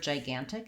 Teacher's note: at the word gigantic the first thing I notice is that it has second syllable stress but it has a clear vowel on the first syllable so it has secondary stress here and what